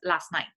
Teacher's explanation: So something like last night in certain varieties of English becomes last night, right? You kind of drop the t.